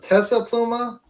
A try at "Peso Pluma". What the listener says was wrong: Peso with a P. Peso. Peso Pluma.